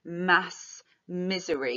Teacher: we've got nasal alliteration in mass misery, which is quite elongating as well. So kind of almost like emphasizes the sheer quantity of misery.